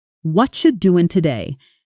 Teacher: It sounds exactly like it looks, but spoken naturally and quickly, it often sounds like watcha doing today. The what are you collapses into something closer to watcha and the stress lands hard on certain syllables while others almost disappear.